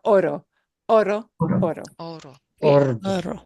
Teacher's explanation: This is the simple roll because it's a single R.